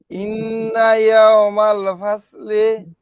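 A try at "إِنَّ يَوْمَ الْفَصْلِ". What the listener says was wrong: হ্যাঁ এটা সুন্দর হয়েছে, কোনো তাড়াহুড়া নাই, রিল্যাক্সে পড়ছেন, এইভাবেই পড়বেন সব সময়।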